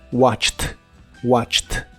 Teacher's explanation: la terminación ed del pasado se pronuncia como t